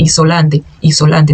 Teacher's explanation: A gente não vai eh falar o S com som de Z, não existe.